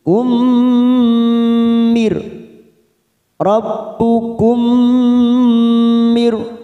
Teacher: huruf mim sukun bertemu mim. Namanya bacaan idgham mimi. Kita tekan 3 ketuk